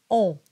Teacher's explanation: nasal sound is the o sound the closed o when and the soft palate drops a little bit and air goes through the nose and that gives it its nasal quality